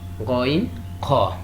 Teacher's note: These 2 letters are pronounced from the upper part of the larynx.